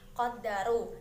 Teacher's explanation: Qaddaru terdapat bacaan ro tafhim dikarenakan adanya ro yang berharokat dhammah yang dimana ro-nya dibaca tebal. Ru terdapat bacaan matabi'i dikarenakan adanya dhammah bertemu dengan wawu sukun panjangnya 2 harokat atau 1 alif.